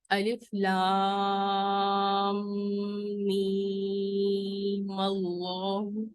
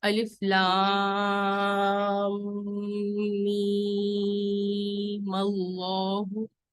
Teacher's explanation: میم جو تھا اینڈ والا اس کے اوپر زبر آ جائے گا اور اس کو لفظ اللہ کے ساتھ ملا دیا جائے گا، لیکن اس کو مد کے ساتھ ہی پڑھا جائے گا.